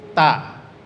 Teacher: artinya tertahan suara nafas sedangkan siddah artinya tertahan tertahan suara maka tertahan suara pada penyebutan huruf tak itu mesti lebih dominan dibandingkan mengalir nafas · ujung lidah ditempelkan ke tempat pertama tumbuh gigi saya di atas maka bunyinya Cukup tak tidak perlu ada peringatan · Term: syiddah